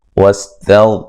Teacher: یہاں تا کو باریک غین کو موٹا ادا کریں گے، غین کو ہلانا نہیں ہے